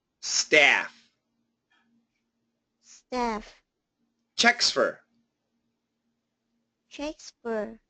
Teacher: The S and the F are similar sounds, so they can go together, but in this case, you do want to keep that S strong